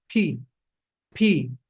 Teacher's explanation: you're sending a gush of air out of your mouth